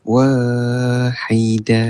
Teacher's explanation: Cuma wa kena baca panjang jugalah. Aa sebanyak dua harakat.